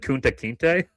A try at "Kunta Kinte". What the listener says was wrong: I'm not, his last name, you don't gotta lean so hard on it. It's just, you can just say Kunta Kinte.